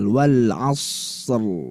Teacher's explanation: huruf sukun yang didahului huruf isti'ala yang sebelumnya ada fathah. Ini harus dibaca tebal. Wal asr. Nah, gitu ya, harus dibaca tebal.